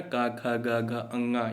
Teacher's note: ये सब कंठ से होते हैं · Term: कंठ ध्वनि